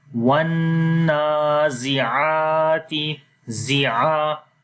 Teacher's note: مثال کے طور پر یا واو کو نون کے ساتھ ملائیں گے تو غنہ کریں گے اور لمبا بھی کرتے ہیں، اس وجہ سے یہاں پر لمبا کیا۔ اس کے بعد نون کے اوپر کھڑی زبر تھی، اس وجہ سے لمبا کیا۔ آگے زا ہے، اس کو لمبا نہیں کیا۔ پھر عین کے اوپر دوبارہ کھڑی زبر تھی تو عین کو لمبا کیا، باقی اس کے علاوہ زا اور تا کو لمبا نہیں کیا۔